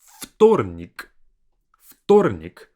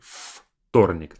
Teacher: Notice that I say вторник, like an F sound, versus it's spelled as V. I don't say вторник.